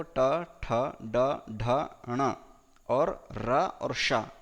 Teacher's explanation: ट वर्ग में देखो ट, ठ, ड, ढ, ण और र और श इनका उच्चारण स्थान मूर्धा है।